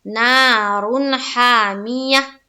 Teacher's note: تو دیکھیں نا میں الف مدہ ہے ایک الف کے باقدر کھینچیں گے